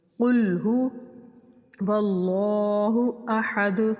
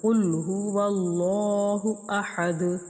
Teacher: قاف کو یہاں موٹا کر کے پڑھیں گے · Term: موٹا قاف